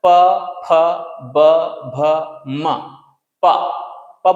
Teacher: तो प फ ब भ म में लिप्स काम कर रहा है, जिसे बोलते हैं ओष्ठ, तो इसको बोल देंगे ओष्ठव्य व्यंजन। · ओंठ है, वो दोनों चिपक रहा है, प फ ब भ म, प, प बोलेंगे तो चिपक जाएगा, फिर फ बोलेंगे तो फ, है ना, चिपक रहा है।